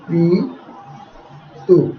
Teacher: ত এর উচ্চারণটা এখানে ওকারের মতো হয়ে উচ্চারিত হচ্ছে